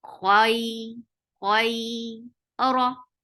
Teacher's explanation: Ra is heavy because there is fatha. Whenever ra is with fatha or dhamma, it's always heavy.